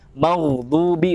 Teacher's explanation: ketika dia gha itu sukun, dan sebelum huruf gha sukun itu berharokat fathah, maka dibacanya maghdubi, tebal.